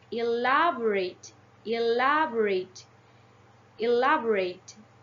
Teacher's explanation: here elaborate has four syllables elaborate yeah different from the others elaborate the primary stress is on the second syllable while the secondary stress is in the third syllable